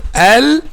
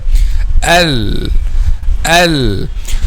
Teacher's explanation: the point of articulation of letter Lam is the front part of the tongue with the tip of the tongue touches what lies opposite to them